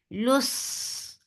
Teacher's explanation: As you will touch lam sad, your lips should be in a straight position. Lus and Saad will get sifa of Rakhawa and Safir, and it will be heavy. Lus, and then Saad will be heavy and make it 2 counts long.